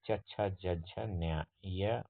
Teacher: ಹಾಗೆಯೇ ತಾಲವ್ಯ, ದವಡೆಯ ಮತ್ತು ನಾಲಿಗೆಯ ನೆರವಿನಿಂದ ಹುಟ್ಟತಕ್ಕಂತಹ ವರ್ಣಗಳನ್ನು ನಾವು ತಾಲವ್ಯ ವರ್ಣಗಳು ಅಂತ ಕರಿತೀವಿ. ಉದಾಹರಣೆಗೆ ಇ, ಈ, ಚ ವರ್ಗ ಅಂದರೆ ಚ, ಛ, ಜ, ಝ, ಜ್ಞ, ಯ ಮತ್ತು ಶಗಳನ್ನು ನಾವು ತಾಲವ್ಯ ವರ್ಣಗಳು ಅಂತ ಕರಿತೀವಿ.